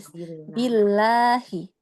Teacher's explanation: pada saat a'udzu billahi, lamnya tidak menebal ya, billah, tidak billah, tapi Billah.